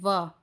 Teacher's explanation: दंतोष्ठ यानी कि वा, ऊपर के दांत और नीचे वाला होठ। इसका उच्चारण स्थान यानी कि दंत भी है और होठ भी है।